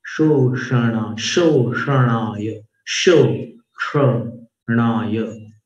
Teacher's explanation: जीभ नीचे जब जाती है निचले दांत के पीछे, तो ऊपर दबाव पड़ता है। शो श जब बोलते हैं षटकोण वाला, तो जीभ ऊपर चली जाती है, मूर्धन्य में सिर की तरफ जाती।